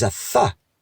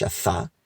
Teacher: their Taf is a Tha. Like an English TH, a Tha. That's how they do a Taf.